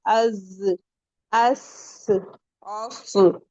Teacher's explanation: اور اسے یہ سیٹی والے لیٹرز بھی کہتے ہیں. اس میں ایک وسلنگ ساؤنڈ ہوتا ہے